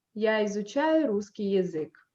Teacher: So you don't go up, you don't rise your tone, you just go down by the end of the phrase. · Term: gradual fall